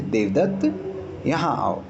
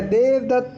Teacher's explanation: देवदत्त, लंबा खींचते हुए, जैसे आप कहीं पहाड़ पे खड़े होकर आवाज़ देते हो ना, तो ये प्लुत रहते हैं।